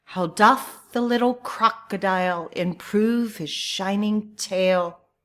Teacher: an unstressed syllable is followed by a stressed syllable and produces the rhythm ta-tum, ta-tum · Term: Iambic meter